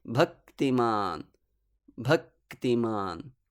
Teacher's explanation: your tongue already takes the place to utter the k sound but halts for about one matra bhaktiman bhaktiman and this little pause of one matra together with · we make a little pause after uttering the vowel which stands before the conjunct see in the word bhaktiman your tongue already takes the place